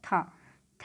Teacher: था जो है स्पर्श है, घोष है, महाप्राण है और दंत्य है